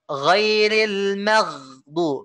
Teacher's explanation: G-nya dominan. G-nya dominan dibanding H-nya. Kalau H-nya dominan, maka G-nya nggak jelas nanti.